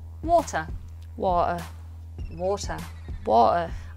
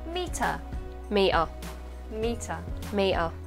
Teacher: if a t appears in the middle of the word then it will be glottalized